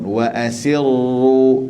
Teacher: ru di sini tekankan ra, wa asirru tasydidkan ra, tapi jangan mengulang. Jangan mengulang lebih pula, takrir. Dia bergetar lebih sangat tak boleh. Sebab sifat ra sifat getar. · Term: Getar sikit je